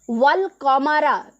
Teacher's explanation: हमज़ा ख़त्म हो जाएगा, गिर जाएगा। इसे ही हमज़ातुल वसल कहते हैं।